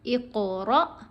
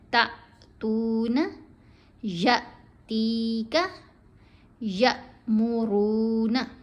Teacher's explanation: را کے اوپر زبر ہے، آگے حمزہ ساکن ہے تو ہم اس کو پڑھیں گے جھٹکے سے